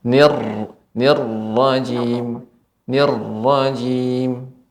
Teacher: Untuk ra Ibu yang bertasydid ini harus sedikit lebih ditekan.